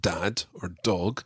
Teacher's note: in english when we say the word dad or dog your tongue actually goes behind your teeth and up towards the hard palate of your mouth